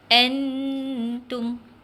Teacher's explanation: Nun tanda mati bertemu dengan huruf ta. Bila nun bertemu ta, kena dengung nah. Macam mana baca dan dengung? Masuk dalam hidung. Sudah ajak masuk dalam hidung dan kadar bacaan dia 2 harakat.